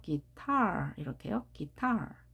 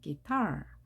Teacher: 우리가 일반적으로 기타라고 똑같이 소리를 높낮이를 같이 말하지만 guitar 뒤에 강세가 있습니다.